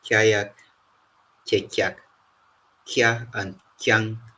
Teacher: we have a palatal form of the K sound, and examples include kyayak, kekyak, kya, and kyang.